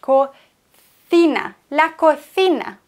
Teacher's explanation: Das ist das Zeichen fürs Lispeln, wie ein englisches TH.